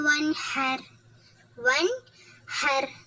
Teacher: இந்த ர வல்லினமா உச்சரிக்கணும் ஹர் அழுத்தம் கொடுக்கணும்